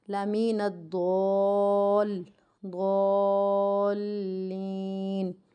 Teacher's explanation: ہمیں 6 الف کی مقدار کے برابر کھینچ کر ہمیں اس کو لمبا کرنا ہے، اور ہماری یہاں پر غلطی ہوتی ہے ضالین، ال کی آواز آتی ہے، ال کی آواز نہیں آئے گی، لمین الضالین۔ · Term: مد لازم